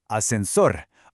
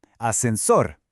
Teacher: All the energy goes on the very last syllable